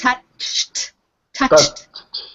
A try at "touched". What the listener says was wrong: Remember, you have to end with a T.